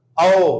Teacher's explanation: जीभ का जो पीछे वाला हिस्सा है उस पर जोर लगेगा जोर लगेगा। आप स्वयं बोल करके देख ले। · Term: पश्च स्वर